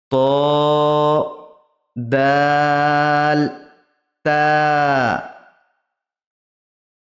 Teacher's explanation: জিভের আগা এবং সামনের উপরের দুই দাঁতের গোড়ার সাথে লাগিয়ে উচ্চারিত হয় দা তা এর উচ্চারণ হবে মুখটা থেফলা করে মুখটা মানে সোজাসুজি